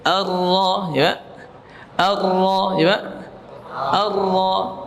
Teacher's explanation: Ya, karena kata Imam Ibnu Jazari makhraj dari huruf ra war-ra yudanihi li dhahrin adkhalu, yaitu huruf ra makhrajnya mendekati makhrajnya nun, ya, yaitu ujung lidah dengan langit-langit atas yang agak depan. Ya, akan tetapi huruf ra bedanya ia pada punggung, ya, pada punggung lidahnya di sini, di punggung lidah, bukan pada ujung sini, ya.